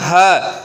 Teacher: जैसे हम बोलें ह, तो हमारे वक्ष स्थल से आती है इसकी ध्वनि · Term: उरस्य